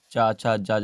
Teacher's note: ऊपर मुंह के तालब में आपकी जीभ लग रही है, तालू में